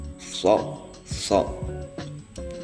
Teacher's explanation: shad itu asnani laswi ya antara gigi dan gusi